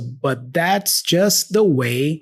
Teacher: he doesn't pronounce the T for but, he drops that, and then he only pronounces the T for that after